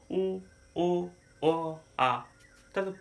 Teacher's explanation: যখন উচ্চারণ করছি আমরা জিবা পিছন দিকে চলে যাচ্ছে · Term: পশ্চাৎ স্বরধ্বনি